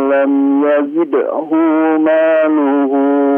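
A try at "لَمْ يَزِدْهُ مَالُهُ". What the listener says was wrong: Coba dilihat Pak. Malam yazidhu maluh. Yazidhu maluh. Hu-nya pendek di sini. Yazidhu maluh.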